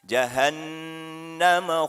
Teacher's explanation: Pakai ha, hati-hati. Jahannunnya bertasydid, maka ini memiliki hukum idgham bi gunnah, didengungkan.